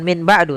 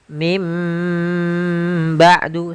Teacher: suara nunnya dirubah menjadi suara huruf mim. Jadi, iqlab itu merubah huruf suara huruf nun menjadi suara huruf mim.